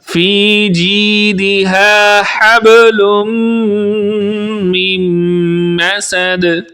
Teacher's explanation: فی جیدہا حبل من مسد، با پر قلقلہ کریں گے، حبل لم پہ غنہ کریں گے، من مسد یہاں پر بھی غنہ کریں گے۔ · یا مدہ ہونے کی وجہ سے جی کو بھی تھوڑا سا ایک الف کی مقدار کے برابر لمبا کریں گے، زیادہ لمبا نہیں کریں گے۔